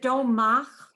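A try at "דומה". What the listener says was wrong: Duma. Duma. H, the simple H. No, that a few times we get in trouble because that's really it doesn't have a sound.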